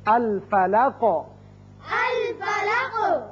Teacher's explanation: الفلقی قاف حروف مستعلیہ میں سے ہے اور حروف قلقلہ میں سے بھی ہے، جب اس پر وقف کریں گے قاف ساکن ہوگا تو اس کی صفت قلقلہ ادا ہوگی